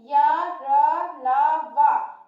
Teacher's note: ये ऐसे वर्ण हैं जो हमारे मुंह के भाग को पूरी तरह से स्पर्श नहीं करते हैं, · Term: अंतःस्थ व्यंजन